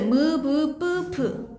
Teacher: 입술 두 개가 마주치면서 나는 소리죠. 무브뿌프. 그래서 입술 소리라고 합니다.